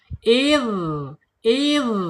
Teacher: Kemudian secara sifat ada di arkhawa. Arkhawa itu di mana? Yaitu mengalirnya suara ketika mengucapkan huruf dzal. Idz idz ya mengalir ya.